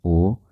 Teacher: आप ओ बोलेंगे तो आधा मुंह आपका खुला रहेगा, आधा बंद रहेगा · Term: अर्ध समृद्ध